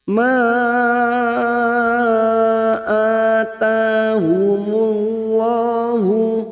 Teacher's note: Ma ada mad yang bertemu dengan hamzah di lain kalimat, mad jaiz munfasil. Kita panjangkan 5 harakat, kita samakan dengan mad wajib tadi.